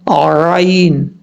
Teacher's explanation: عین اور ہا یہ دونوں ایک ہی جگہ سے ادا ہوتے ہیں، یعنی ایک سائڈ سے عین، دوسری سائڈ سے ہا پڑھا جاتا ہے گلے کے درمیان سے